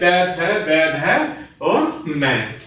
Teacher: next होता है दंत, जो कि दांतों से बोले जाने के कारण इन्हें दंतवर्ण कहते हैं